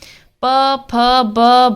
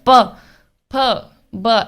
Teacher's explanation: ओट हमारे बारबार एक दूसरे से चिपक रहे हैं यानी किय कैसे स्वर है ओटस स्वर है और इसमें पंचमाक्षर